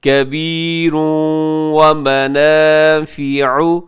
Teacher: واو جو ہے وہ حروف یرملون کے اندر شامل ہے، اب یہاں پہ ادغام کریں گے غنے کے ساتھ